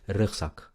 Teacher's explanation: una consonante antes de la Z se vuelve S